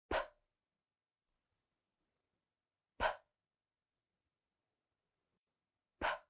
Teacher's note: it's unvoiced, which means that you are not going to use your voice. No vibration in the throat. You're just going to push out the air with your lips. No sound. So, P. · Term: P sound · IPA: /p/